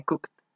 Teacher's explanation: Cook, al tampoco tener vibración en las cuerdas vocales, se pronuncia su final con T. Cook se convierte en cooked.